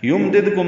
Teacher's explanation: فورہم ہاذا میں دونوں برابر لمبے کریں گے، ہا اقصا حلق سے ادا کرتے ہوئے، دال نرمی سے پڑھتے ہوئے، دا یمددکم میں میم ساکن پہ اظہار، دال ساکن پہ قلقلہ